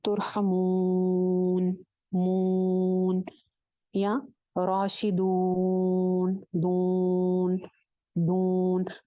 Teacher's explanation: یا اور واو کی آواز کو ناک میں لے کے جانا